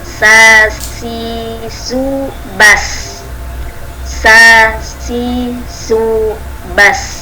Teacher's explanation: Ujung lidah berada di halaman 2 gigi seri bawah. Ujung lidah berada di halaman gigi seri bawah, sehingga suara zai atau sin atau sod ya, ini keluar di antara 2 gigi seri atas dan bawah, jadi di pertengahannya. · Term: huruf Sin